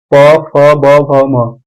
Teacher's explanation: प बण को ओठ से बोला जाता है